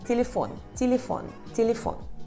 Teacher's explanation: Eu sei que a sílaba tônica é fon, a última sílaba, fon.